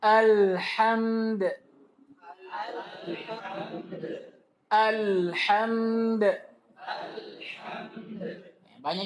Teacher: Jangan sampai dia rubah ha tipis menjadi ha tebal.